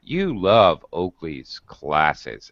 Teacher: i go up and up you love oakley's classes and then it goes down it's like a hill